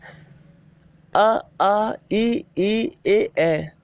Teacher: इन स्वरों के उच्चारण में ओठों की आकृति वृत्ताकार नहीं बनती। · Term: अवृत्तमुखी स्वर